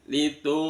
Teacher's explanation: nun disukun bertemu dengan zal, dibaca ikhfa hakiki, disamarkan bunyi nunnya. Litu samar antara nun sama zal.